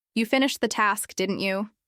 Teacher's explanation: with a strong rising tone at the end